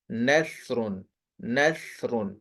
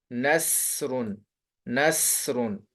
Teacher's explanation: باقی ان دونوں کی آوازیں باریک ہیں، کیونکہ یہ دونوں حرف سا اور سین نہ تو خصوص وقت انقیز میں آتے ہیں اور نہ ہی الف لام را میں آتے ہیں، تو یہ حروف دونوں جو حرف ہیں یہ باریک ہی ہیں۔ فرق ان میں یہ ہے کہ سا نرم ہوتی ہے اور سین سیٹی والی ہوتی ہے